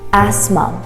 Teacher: The TH is not pronounced.